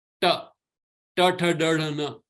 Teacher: Ta is murdhanya. It is coming retroflex, coming from the up of the palate, palatal.